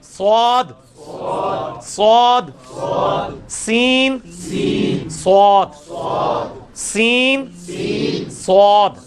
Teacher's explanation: سین کا مخرج اور سواد کا مخرج ایک ہے, صرف اس کو موٹا کر کے پڑھنا ہے. اس میں بھی سیٹی کی آواز آئے گی. · سین کی آواز کو موٹا کیا, سواد بن گیا